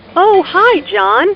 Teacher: notice the rising intonation here is excited to hear from John